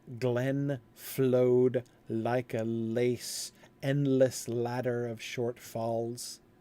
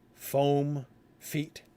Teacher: The liquid L's becoming the fricative F.